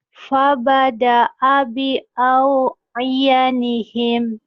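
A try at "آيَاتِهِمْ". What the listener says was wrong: Iyati. Kan titiknya 2. Iyatihim.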